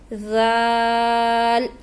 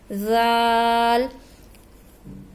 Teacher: اب نرمی سے ادا ہونے والا دوسرا حرف ہم پڑھ رہے ہیں ذال. اس کو بھی زبان کی جو آگے نوک ہے، جو اگلے دانت ہیں ان کی نوک کے ساتھ ٹچ کریں گے. تھوڑی سی زبان ہماری، زبان کا جو اگلا حصہ ہے وہ ہلکا سا باہر نکلے گا تو یہ نرمی سے ادا ہوگا لفظ ذال.